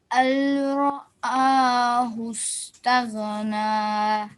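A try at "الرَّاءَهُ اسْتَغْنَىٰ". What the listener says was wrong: Okay, so alif and ra are joined. There's no noon sound. There's no lam sound. Ar-ra. Ar-ra'ahu istaghna. Now, ghain is not a qalqala letter, okay? So we don't do any sort of bounce. Tagh. Taghna.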